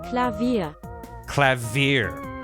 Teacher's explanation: They put the emphasis on the second syllable more.